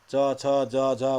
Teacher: त्यो च छ ज झ को उच्चारण हाम्रो बत्से भागबाट हुन्छ हैन। दाँतको जराभन्दा पछाडिको भागबाट हुन्छ भन्छ, जरा भने पनि भयो हैन। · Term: दन्तमूल